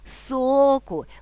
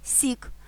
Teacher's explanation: відбувається чергування звуку О який стоїть у відкритому складі зі звуком і що у закритому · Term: чергуванням